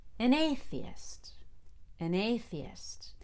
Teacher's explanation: the A in atheist. An A, so you have to have the most energy on A.